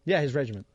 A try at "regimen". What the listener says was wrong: Regimen. There's no T. There's no T at the end. You think a regiment is a regimen.